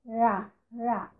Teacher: Ok, a aproximante, a língua toca no alvéolo.